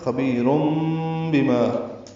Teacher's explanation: خبیرم بما اس کو بدلنا کہتے ہیں، نون کی آواز کو میم سے بدلنا، یہ اقلاب ہے، اس کا دوسرا نام ابدال بھی ہے۔